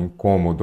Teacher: incômodo a sílaba tônica é antepenúltima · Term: proparoxítonas